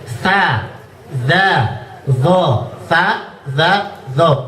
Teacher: Ujung lidah bertemu dengan ujung gigi seri bagian atas. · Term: harfun takhfif